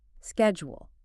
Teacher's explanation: In American English, we pronounce it schedule. It has a hard K sound right at the beginning.